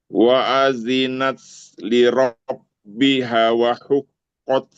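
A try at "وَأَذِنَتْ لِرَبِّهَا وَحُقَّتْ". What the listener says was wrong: Tapi haknya panjang dulu. Bihawa.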